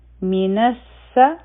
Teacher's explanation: نون به د سین سره ډایرکټ یوځای کو، حمزه الوصل به هم نه وایو، او لام به هم نه وایو، ځکه چې دا لام شمسیه دی. من الس، او بیا دی مائی، ما حرفی مد داو، مخی چونکه حمزه راغی، نو دا متصل مد جوړ شو، او دا به 4 حرکه راکاږو.